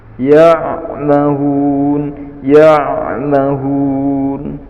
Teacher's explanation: Ain sukun harus agak dilenturkan, atau dengan kata lain suaranya mengalir.